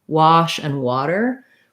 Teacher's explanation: So this is true also in words like wash and water, where the rounding comes from the W, not necessarily because it's spelled with letter O